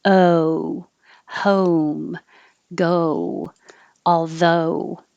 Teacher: moving up to an oo where your tongue goes higher in the back and your lips go from unrounded to rounded · not just o aldo so oh although think of it as starting more in the uh position with your tongue low in the middle and pull back uh and moving up to an oo where your tongue goes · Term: american o